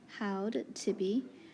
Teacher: Notice the reason this AU is long is because it's a diphthong, and also because we have 2 consonants in a row, D and T.